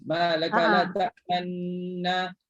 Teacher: Walaupun dia dah idgham, dia tak idghamkan sepenuhnya, tapi dia ada buat bacaan dengan ismam, muncungkan kedua bibir mulut